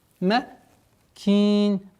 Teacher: При остановке аннулируется танвин кесра, уходит в сукун, и долгота в размере 4 огласовок, как мы с вами выбрали, кесру удлиняем.